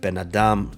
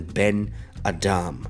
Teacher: our English hyphen it binds two words together forming one concept the accent shifts from the first word to the second word placing the stress on the second word so you have benadam rather than Ben Adam same with all